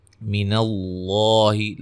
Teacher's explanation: لفظ اللہ کے لام کو موٹا ادا کریں گے